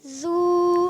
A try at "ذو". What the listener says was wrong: ذو. زو کی آواز نہیں, ذو. زور نہ دیں, ز کی آواز نہیں. ذو. یہ تو پڑھیں گے ذو. زو سیٹی آئے گی تو خراب ہو جائے گا.